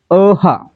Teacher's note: याचा उच्चार करताना कंठातून हवा बाहेर सोडली जाते म्हणून याला कंठ म्हणायचं ठीक आहे म्हणजे पर्याय तीन जर ओठांची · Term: विसर्ग